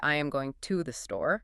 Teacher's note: the word just becomes a quick, soft too